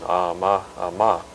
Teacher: the speaker goes from higher pitch to lower for one word, and from lower pitch to higher in the other